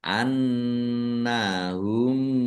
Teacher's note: mim sukun bertemu dengan huruf mim. Bacaan idgham mutamasilin atau idgham mimi ya. Mendeng mim ditandai mimnya ada tasdidnya.